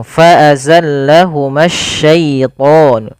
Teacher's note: Di sini ma tidak boleh dipanjangkan meskipun dia awalnya mad tabi'i. Karena dia bertemu dengan alif lam di sini dan alif lam syamsiyah.